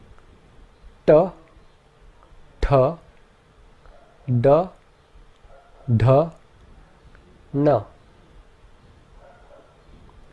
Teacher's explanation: The next group are called cerebrals, where the tongue seals the breath behind it by arching up firmly against the roof of the mouth. The cerebrals have a very hard and sharp sound, and they are all represented by letters with a dot beneath them.